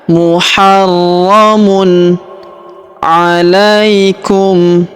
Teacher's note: Huruf ro kita tahan dan kita tekan karena terdapat tanda tasydid di atasnya.